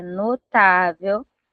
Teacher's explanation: a palavra notável, onde tá a sílaba mais forte? Na penúltima. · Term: paroxítona